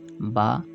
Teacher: দুই ঠোঁটের ভিজা অংশ হতে পাতলা আওয়াজে